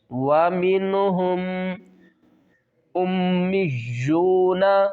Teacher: حمزہ کو میم سے ملائیں گے، میم مشدد ہے، یہاں پر غنہ کریں گے۔ حمزہ میم پیش الف کے اوپر پیش آ گئی ہے، اب یہ الف نہیں رہی، یہ حمزہ میں تبدیل ہو گیا۔